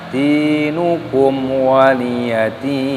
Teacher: ada huruf dal yang berharokat kasroh, ada tanda ya sukunnya, maka di sini dipanjangkan dalnya